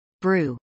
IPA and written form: brˈu (brew)